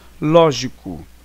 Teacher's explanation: Porque é a antepenúltima sílaba mais forte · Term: proparoxítona real